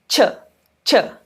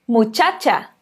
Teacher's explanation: Ele vai ser igualzinho o som do TCH em português, quando a gente fala tchau, tch, tch. Então, ele é a junção de um T, né, o T, com um sh. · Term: som do CH